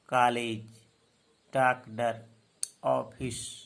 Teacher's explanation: इसका उच्चारण आ और ओ के बीच का होता है।